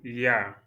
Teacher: il y a la langue qui est levée un peu vers le palais et ça revient